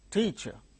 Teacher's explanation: In these two syllables, the first syllable is uttered with a greater force. That means the first syllable gains stress.